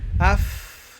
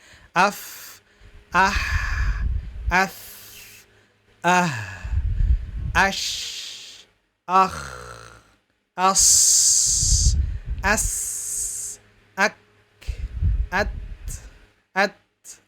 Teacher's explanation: Jadi kalau kita mengucapkan huruf fa, af, nah, keluar hembusan nafas, ya. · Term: hams